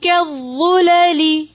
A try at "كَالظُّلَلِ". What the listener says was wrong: کاف کو موٹا نہیں کریں گے، وا کو صرف موٹا کریں گے،